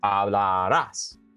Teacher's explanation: So we've got as with an accent mark right there. So that final syllable is the one that's stressed.